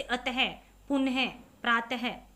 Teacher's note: विसर्ग, इसका उच्चारण ह की तरह होता है, जैसे यहाँ पर है अह का चिन्ह, ये दो बिंदी होता है, जैसे अतः, पुनः, प्रातः आदि। ठीक है, इनका उच्चारण बाद में ह का साउंड आएगा